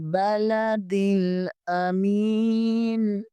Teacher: इसे भी बगैर ध्यांचे बगैर झटका दिए पढ़ेंगे। बलदिन मीम जेर के आगे या मद्दा है इसे एक अलफ के बराबर खींचेंगे